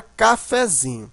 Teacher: o fé ele não é tão fraco mas ele também não é tão forte como zinho a sílaba forte que mais forte aqui é o fim da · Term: sílaba subtônica